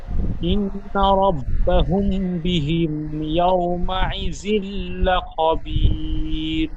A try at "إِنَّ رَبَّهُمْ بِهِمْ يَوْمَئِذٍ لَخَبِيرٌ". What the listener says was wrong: ইন্না, ইন গুন্না হয়নি, গুন্না আর বেশি করে করেন, একালি গুন্না হবে।